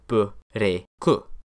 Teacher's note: That's where your stereotypical Japanese accent comes from, with a word like break, which ends in a non-nasal consonant, remember, being broken down into b, re, ku.